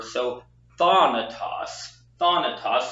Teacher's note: Remember that that alpha makes a kind of an ah sound, like in father.